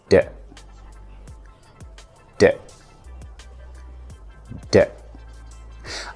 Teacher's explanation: it's a voiced sound which means you will use your vocal cords and it's also considered a stop sound how do you produce it you place your tongue right behind